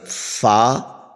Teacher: حروف شفویہ، ان کا نام ہے فا کا، یہ جو ہے اوپر کے دانتوں کے کنارے اور نچلے ہونٹ کے تر حصے سے ادا ہوتا ہے